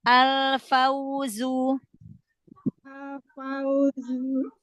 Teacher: Jangan zu, jangan ada hamzah.